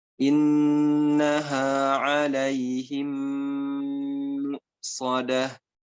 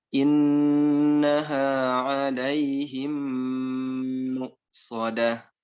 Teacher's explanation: Kemudian dalam istilah tajwid disebut idgham mimi. Idgham mimi wajib gunnah selama 2 harokat.